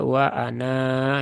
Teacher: kalau waakaf waqaf di sini baru terbaca wa Ana ya panjang dua harakat